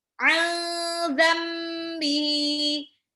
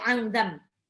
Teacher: dibaca samar dan ditahan 2 sampai 3 harokat. Namanya ikhfa.